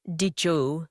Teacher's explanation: D plus Y together often sounds like J.